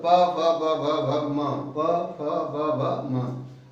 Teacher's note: इनका उच्चारण स्थान होता है ओष्ठ अर्थात ओष्ठ से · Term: प वर्ग